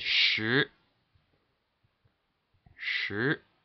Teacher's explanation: Alright, now the second tone is a rising tone, and it starts at 3 and ends at 5. So it will just steadily rise. There's no dip, just rising from 3 to 5.